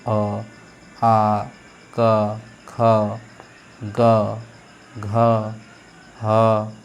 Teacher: सिर्फ आपका आवाज कहां से आ रहा है कंठ से आ रहा है